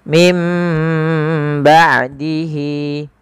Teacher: Mim ba, sambil ditahan sepanjang 2 harokat baru dilepaskan. Mim ba'dihi. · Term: bacaan iqlab